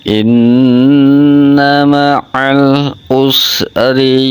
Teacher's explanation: tarkik rohnya dibaca tipis ri